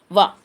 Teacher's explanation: దంతం మరియు పెదవుల నుండి పుట్టినవి, వాటి సాయంతో పలికేవి. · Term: దంత్యోష్ఠము